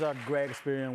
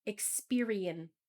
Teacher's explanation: When he said a great experience, I couldn't hear the S at the end.